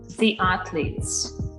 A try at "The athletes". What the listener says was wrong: Careful with your A. And you were saying it nicely before, and now you're focusing on the E, so don't lose the A. It's the A like cat, not athletes, but athletes.